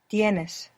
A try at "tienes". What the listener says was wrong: Tienes. Good.